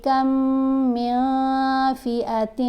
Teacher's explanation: یہاں آپ نے دیکھا نون کے اوپر ہم نے اخفا کیا، میاں پڑھا، من نہیں پڑھا، نون کو واضح نہیں پڑھنا، نون کو ناک میں چھپا کر پڑھیں گے کیونکہ یہ اخفا کا اصول لگ رہا ہے۔